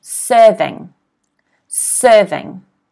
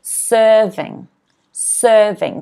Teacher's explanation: this here is an apostrophe it is before the first syllable so we pronounce the first syllable stressed